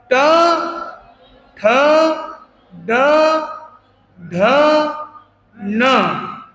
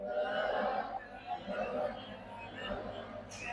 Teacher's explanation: और ये जो ट ठ ड ढ ण ये जो पूरे एक क्रम इसको बोलते हैं मूर्धन्य वर्ण। मूर्धन्य मतलब जिनका उच्चारण में मस्तक तक वाइब्रेशन जाता है